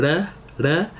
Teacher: Japanese, where the R sound is like your tongue going to the top of your mouth, like L, L, like in English we use it to make the L, but in Japanese they use it to make the R sound, which we don't.